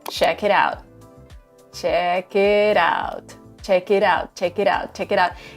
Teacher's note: what Americans do sometimes is that they replace the sound t with the sound D